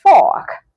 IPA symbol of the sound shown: o: